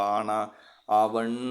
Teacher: நெடில் எழுத்துக்களை ரெண்டு மாத்திரை அளவு கொஞ்சம் இழுத்து சொல்லுவோம். இப்ப ஆனா, ஆவன்னா அப்படி இழுத்து சொல்லுவோம்ல மெய் எழுத்துக்களை அரை மாத்திரை அளவுல ரொம்ப சீக்கிரமா சொல்லிருவோம்.